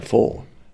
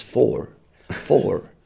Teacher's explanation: The rhotic R, which is, you know, very prevalent in American accents.